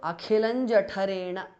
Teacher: the anuswara changes to nya, which is the nasal of the cha varga